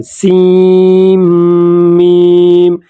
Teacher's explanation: سین کے آخر میں جو نون آتا ہے تو ہم نون نہیں پڑھیں گے بلکہ اس کے ساتھ میم پڑھیں گے ، سیم پڑھیں گے، سیم میم، اور میم میں غنہ کریں